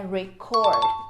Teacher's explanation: nessa frase aqui a pronúncia correta é record cor é a sílaba tônica na última sílaba por quê porque aqui é um verbo gravar gravar um vídeo · Cord é a sílaba tônica, a última sílaba.